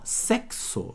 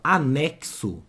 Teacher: Esse X aqui, ó, ele tem 2 sons. É o som do CS junto. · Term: dífono